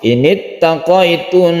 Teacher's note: Init taqaitun, kita tahan membacanya karena dia itu gunnah.